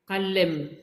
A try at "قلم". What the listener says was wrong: n'appuie pas sur l'em. Tu fais qalem. Qalem. Qalem. Qalem.